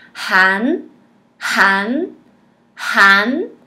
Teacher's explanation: A primeira sílaba termina com N, então a gente cola a língua no céu da boca.